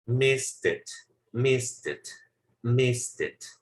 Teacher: Sí pronuncian la T y lo unen con el siguiente sonido.